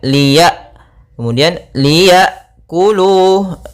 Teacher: sukun Hamzah sukun memiliki sifat yang mencolok yaitu sifat jaharnya dan sifat syiddah yaitu tertahannya nafas dan tertahannya suara ketika melafalkan hamzahnya sukun